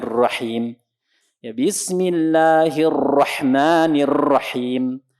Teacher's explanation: ketika mengucapkan huruf ro ini banyak getarannya